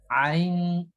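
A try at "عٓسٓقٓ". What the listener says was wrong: Gak boleh langsung dengung. Ain sin qaf. Itu kalau pakai tajwid. Tapi kalau kita belum bisa pakai gunnahnya, cukup dibaca sesuai namanya aja. Ain sin qaf gitu. Itu insya Allah juga udah benar.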